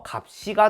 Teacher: 시옷이 올라가는 경우에는 쌍시옷, 즉 된소리로 발음된다고 하네요